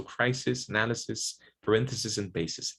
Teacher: they're pronounced with the voiceless S, and we haven't covered vowels yet, but it's this lax vowel I